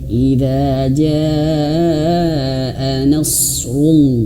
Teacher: Tebalkan rul pangkal lidahnya naik